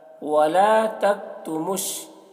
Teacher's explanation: میم کو شین سے ملا کر، میم شین پیش مش، یہ واو اور یہ الف لام نہیں پڑھا جائے گا۔ شہادہ یہاں پر وقف کریں گے، یہ گولتا ہائے ساکنہ سے بدل جائے گی۔